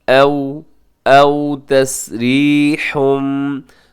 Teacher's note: औ यहाँ वाव लीन है, इसे अब मजहूल ना पड़ेगा। औ को आओ पढ़ना दुरुस्त नहीं है। औ औ तस्रीहुम, रा बारीक है क्योंकि रा के नीचे ज़ेर है, और उसके बाद भी इक़लाब हो रहा है क्योंकि तनवीन के बाद बा आ रहा है।